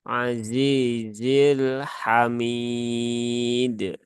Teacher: zainya di sini yang kasrh dibaca Dua harakat Kemudian yang kedua dibaca satu harakat